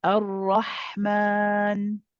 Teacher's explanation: Okay, what I'd like to do is when you say Ar-Rahman, the ha, I want you, because it's a rakhawa letter, let it run. So stay on it for a little bit and then go to the meme. At the moment, the timing of the ha is a little short.